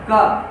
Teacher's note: कंठ से निकलने वाला एक आपका स्पर्शी व्यंजन है